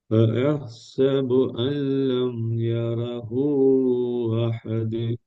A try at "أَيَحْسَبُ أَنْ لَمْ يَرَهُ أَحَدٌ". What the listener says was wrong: அதுல நீங்க நீட்டுறது போதாது. யரஹூ அஹது யரஹூ அஹது 3 செகண்டுக்கு நீட்டி என்ற அந்த தெளிவா போதுன்னா சரி.